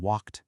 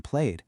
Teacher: That ed ending can actually sound a few different ways when you say it. Sometimes it's a t sound like in walked. Sometimes it's a d sound like in played.